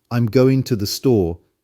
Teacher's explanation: notice how the G sound at the end of going is dropped and two becomes a softer T sound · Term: dropping sounds